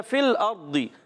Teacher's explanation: اوپر والے دانتوں کے کنارے نیچے والے ہونٹ کے ترشے سے فا ادا ہوتا ہے · فا کو لام سے ملائیں گے، لام کو ہلائیں گے نہیں